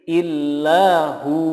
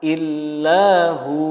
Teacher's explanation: ketika diwakafkan menjadi illahu, hu-nya dibaca panjang 2 harokat. Tidak boleh membacanya dengan illahu pendek atau illahuwa tanpa ada perubahan. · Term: hukum mad